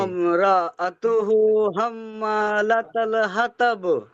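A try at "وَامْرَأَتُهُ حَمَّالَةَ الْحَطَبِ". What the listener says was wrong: হাতব বলবেন, হাতব। ত আর তা আলাদা, কেমন?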